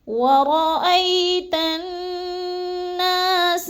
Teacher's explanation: جب تا کو نون مشدد کے ساتھ ملانا ہے تو ہم نے غنہ کرنا ہے، ادغام مع الغنہ · ید کی دال کو ہم نے ہلا کے پڑھنا ہے، ساکن ہے اور حروف قلقلہ میں سے ہے